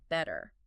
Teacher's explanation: In British English, it's often a clear crisp t sound like in better sounds like better. an American often becomes a flap t which sounds much more like a quick t sound